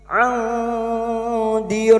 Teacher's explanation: nun sukun bertemu dal ikhfa hakiki kita samarkan bunyi nun sukun dan mendengung selama 3 harokat